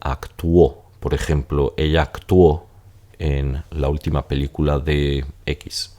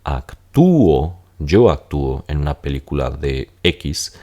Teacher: Mientras que aquí, actúo, yo actúo en una película de X, serán tres sílabas porque la U y la O se van a separar